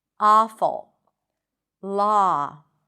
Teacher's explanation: you can even relax your lips and pronounce it more like an open a sound.